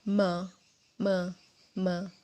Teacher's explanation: Kedua bibir ditautkan me. Sedikit ada getaran di tenggorokan.